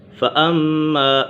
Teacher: فَأَمَّا میم مشدد ہے، میم مشدد میں سے غنہ ہوتا ہے